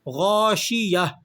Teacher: گول تا پر جب آپ اسے وقف کرتے ہیں تو وقف کی حالت میں آپ نے اس گول تا کو ہا سے تبدیل کر دینا ہوتا ہے۔ گول تا کو وقف کرتے ہوئے ہم ہا سے تبدیل کر کے چینج کر کے پڑھتے ہیں